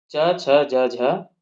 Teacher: इनका उच्चारण जो है जिव्हा के मध्य भाग से तालु में स्पर्श करके होता है। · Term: तालव्य वर्ण